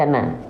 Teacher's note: vokalnya tetap sesuai dengan basicnya yaitu vokal a tidak berubah menjadi O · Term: huruf yang tipis